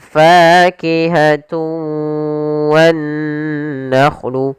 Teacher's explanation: Ada yang kurang atau masih sedikit menyisakan suara nunnya. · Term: idgham naqis